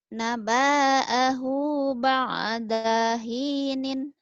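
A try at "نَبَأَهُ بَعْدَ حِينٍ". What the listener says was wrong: Kenapa adanya panjang? Nggak ada panjang. Naba'ahu ba'da hinin.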